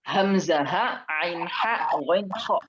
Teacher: Hamzah di sini bawah, tenggorokan bawah. Ain, ha di tengah, ghain, kha di atas. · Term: huruf-huruf halqi